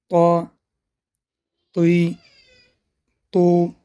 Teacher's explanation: زبان به ریشه دندان‌های پیش بالا می‌رسد و قفای زبان به بالا برداشته می‌شود. این حرف صفت استعلا و قلقله را دارد.